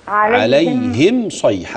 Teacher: الميم في عليهم مافيش فيها غنه